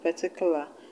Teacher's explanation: the word particular has four syllables, with three of the syllables having the schwa sound, and the stress being in the only syllable without the schwa sound